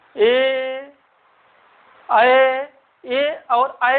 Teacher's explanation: बाहर की तरफ ओंठ नहीं आ रहा है, ना वृत्ताकार बन रहा है